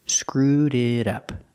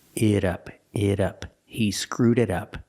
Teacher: The T in it is pronounced like a fast D.